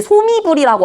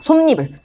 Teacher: 앞에 있는 말은 받침이 있고 뒤에 있는 말은 이로 시작해. 그럼 이 사이에 니은 들어가서 니불이 되는 겁니다. 솜니불. 니은 첨가랑 헷갈릴 수 있는 사이소리 현상과 사이소리 표기에 대한 이야기를 해볼게.